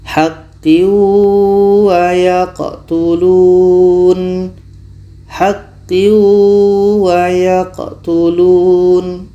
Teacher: Tanwin masuk ke waw, tapi tidak sempurna masuk ke waw, masih ada bunyi tanwinnya. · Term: idgham naqish